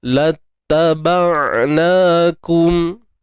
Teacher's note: huruf ain sukun macam biasa, tahan. Tidak tahan suara dan tidak lepas suara. Tawassut.